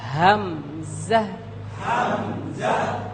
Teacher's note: আমরা যেখান থেকে উচ্চারণ করছি এই জায়গা, এখান থেকে হলকের একেবারে শুরু থেকে উচ্চারিত হবে।